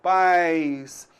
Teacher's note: Você então vai notar aí que a gente tem uma semivogal i